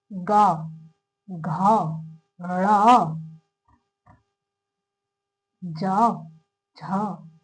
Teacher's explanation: इनमें बोलने में हल्का सा टाइम लग रहा है और थोड़ी झन्नाहट होती है गले में बोलने में। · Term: सघोष वर्ण